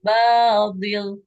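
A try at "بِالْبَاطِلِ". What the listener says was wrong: Jangan dil. Bil batil.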